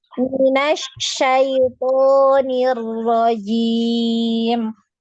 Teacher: Dengan shin ya, jangan sin. Shin ya, tengah lidah.